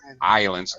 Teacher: No S. Don't pronounce the S in English for islands.